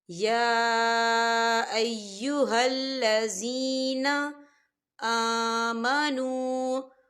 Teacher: یا کے اوپر کھڑی حرکات ہے اور اس پر مد بھی ہے، تو ہم اسے 4 حرکت کے برابر کھینچے پڑھیں گے